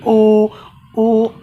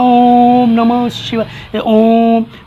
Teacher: आप बोल के देख लीजिए, ओ आवाज़ अंदर से, जैसे ओम बोलते हैं ना, ओम नमः शिवाय, ओम, जब ओम बोलते हैं तो ओम में ओठ की बनावट बिगड़ जाती है और कंठ से आवाज़ आती है, तभी तो लंबा जाप निकलता है ना, ओम। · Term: कंठोष्ठ